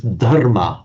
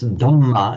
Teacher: In Sanskrit, it is dharma with a dharma, and the reason it's dhamma in Pali is the separate phenomenon of the phonetic mutation of the consonant cluster rm in Sanskrit, which will routinely become a double m in Pali